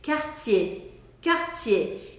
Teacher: o R do meio da palavra, eu vou fazer aquele ar saindo da garganta · Esquece que tem o R, mas é o R que transforma o som do E.